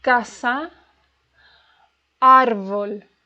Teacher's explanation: The stress is in the second to last syllable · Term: Graves